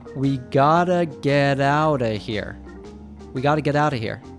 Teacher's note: of often reduces to just a schwa sound